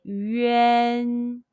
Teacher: followed by the en of the english name wendy be careful not to pronounce the a n as a big mouth and sound but as a half open mouth spread lips un sound